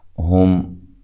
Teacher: ہم، یہاں میم کو ہلانا نہیں ہے ملانے کی صورت میں، وقف کی صورت میں بھی نہیں، اور اسی طرح یہاں میم ساکن کا اظہار ہے، جب اس کو ملائیں گے تو غنہ نہیں کریں گے